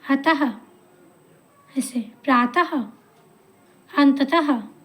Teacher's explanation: पीछे से ऐसा साउंड आता है कि हम ह बोल रहे हैं, ह की तरह आवाज़ आती है। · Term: विसर्ग